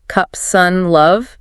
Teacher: It's very relaxed, central. Mouth just slightly open. Tongue rests in the middle. It's short, often unstressed.